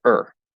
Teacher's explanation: the full pronunciation is or but it usually gets reduced uh to er because it's usually not stressed